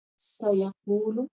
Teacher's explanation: سیقول، سین میں سٹی کی آواز آئے گی